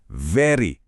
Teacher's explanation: वेरी बोलते समय होठ गोल नहीं करने, दांत होठ पर रखने हैं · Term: V